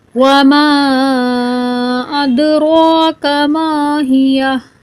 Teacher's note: دال پہ کلکلا کریں گے، را کو پر پڑھیں گے